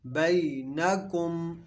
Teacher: یہاں پہ یہ یا لین ہے، اس کو لمبا نہیں کریں گے